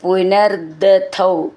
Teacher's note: അങ്ങനെ വിസർഗം ഇട്ട് ചൊല്ലുകയാണെങ്കിൽ പിന്നെ ദൗ ഒരു ദ എന്ന് മതി ഇവിടെ ചേർത്ത് ചൊല്ലുമ്പോൾ പുനർദൗ ദ എന്ന് ഡബിൾ ആയിട്ടുണ്ട്